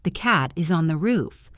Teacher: Notice how is and on get squished together so it sounds like is on.